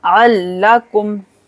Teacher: आइन को लाम के साथ मिलाएंगे, अल, इदगाम बिला गुन्ना, अल्लकुम।